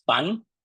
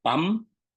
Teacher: también se usa en posición final la bilabialización de la alveolar